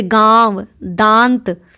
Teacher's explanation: मात्राएं होती यह साइन होता है जैसे गांव दांत अ मतलब इनका उच्चारण जो है मुख और नासिक यानि मुंह और नाक दोनों से होता है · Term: अनुनासिक स्वर